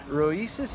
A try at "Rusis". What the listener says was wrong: Oh, well, if you're gonna go with the Latvian, then it's something like that. There's the first S is actually an H-Y sound. Which is, but I just say Rusis. It sounds more Greek that way, I suppose. Rusis.